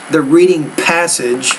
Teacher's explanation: In the reading passage, when you say the word passage, the P, you need to pronounce that with a little bit more air